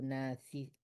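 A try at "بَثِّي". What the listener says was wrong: Bukan na tapi bas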